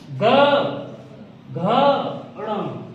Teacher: जैसे मैंने कहा क ख, तो यहाँ पर कंपन नहीं हो रहा है। जैसे ही हम सघोष में पहुंचे यहाँ पर कंपन स्टार्ट हो जाएगा तुम्हारे बोलने में